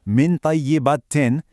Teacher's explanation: In the phrase min tayyibatin, the silent N in min isn't fully pronounced, but it's not totally merged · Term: ikhfa